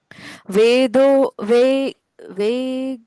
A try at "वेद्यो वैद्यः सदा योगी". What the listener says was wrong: द्यो अक्षर है ये, आधे द के साथ यो।